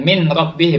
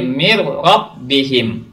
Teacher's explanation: Nun mati bertemu dengan ro. Jadi nunnya dimasukkan ke huruf ro, seakan huruf ro ini ada tasdidnya. Mir rabbihim, ada tekanan di situ. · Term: idgham bila gunnah